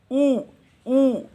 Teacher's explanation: नीचे वाला होंठ ऊपर टच नहीं कर रहा, तो इसीलिए ये विवृत प्रयत्न है